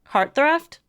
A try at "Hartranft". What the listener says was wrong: There's an N in there. Hartranft?